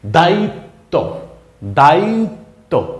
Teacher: তয়ের সাথে ব যুক্ত হওয়ার পর বয়ের কিন্তু কোনো উচ্চারণ হয় নাই। বয়ের কারণে ত বর্ণটার ডাবল উচ্চারণ হয়েছে। মানে দুইটা ত একসাথে থাকলে যেমন করে উচ্চারিত হইতো, এখানে ঠিক সেইভাবে উচ্চারিত হয়েছে।